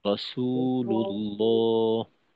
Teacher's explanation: রসুতে কিন্তু টান দিতে হবে। আপনার রসু, এই উচ্চারণ লম্বা হয়নি, তো এটাকে লম্বা করতে হবে।